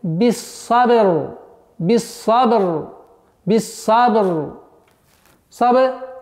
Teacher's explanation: буква ра в данном случае подчиняется фетхе, то есть она твердая